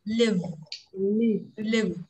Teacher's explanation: Mà phải có âm v cuối nhưng mà nhỏ thôi, ngắn thôi.